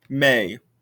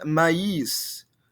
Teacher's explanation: This is a really good example because we have the word that we've seen lots and lots before, mais, but in French, same spelling except no tréma, mais. That A and that I sound get smushed together